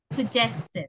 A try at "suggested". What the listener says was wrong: Exactly.